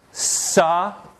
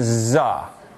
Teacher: they're both non-nasal ones voiceless saw and the others voiced